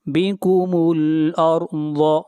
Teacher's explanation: را کو موٹا پڑھیں گے اور ضاد کو موٹا پڑھیں گے، ضاد حروف مستعلیہ میں سے ہے